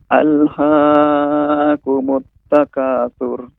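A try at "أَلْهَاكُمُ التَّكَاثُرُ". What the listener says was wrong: Bapak, pengucapan alha ini berlebih ya, panjang mad dari huruf H. Alhaakumut, maka cara pembacanya cukup ditekan, dipanjangkan. Alhaakumut takatsur. Maka ini sudah Bapak mengucapkan 2 harokat. Alhaakumut takatsur. Adapun pengucapan alhaakumut maka lebih dari 2 harokat.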